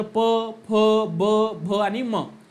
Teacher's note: प फ ब भ आणि म या 5 वर्णाचा उच्चार करत असताना आपलं ओठ एकमेकांना स्पर्श होते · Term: ओष्ठ्य वर्ण